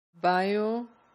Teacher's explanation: So each of these syllables will be equally stressed.